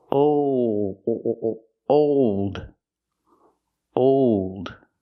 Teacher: when you make that dark L the tongue gets tight and makes an extra sound